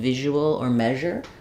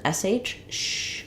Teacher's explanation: this is an example of letter s saying the z sound like it does in visual or measure that's basically the same shape as an sh sh but my voice is on